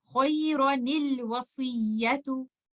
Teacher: You will give this noon a kasra, and you will join this with the lam, which is the sakin letter of the next word